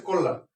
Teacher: এখানে ছিল মূর্ধন্য কিন্তু উচ্চারণ হবে দন্তন্য